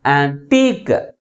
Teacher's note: Second syllable is pronounced with a greater force comparing with first one. Okay, that's why the primary stress is on the last syllable.